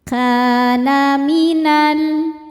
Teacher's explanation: In ka ka mad thobi'i zohiri. Sebab ada alif didahului fathah maka huruf kaf panjang dua harakat. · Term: mad tabi'i dhahiri